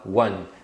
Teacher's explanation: esse U que você fala no início é uma semivogal então ele é o som do W